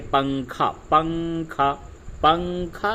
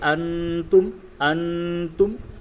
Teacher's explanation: نون کی جو آواز ہے اس کو ناک سے نکالیں گے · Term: اخفا